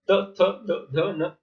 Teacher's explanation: ये दांतों का स्पर्श करते हैं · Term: त वर्ग